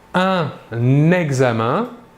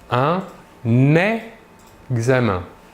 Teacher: Un exemple, un examen, ici un est un article, la dernière lettre est N et la première lettre du mot qui le suit est une voyelle. Ici, nous réaliserons donc la liaison entre le N et le E